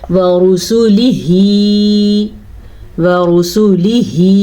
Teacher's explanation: را کو پر پڑھنا ہے، را پہ پیش ہے